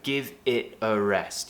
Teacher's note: We're actually dropping the T on it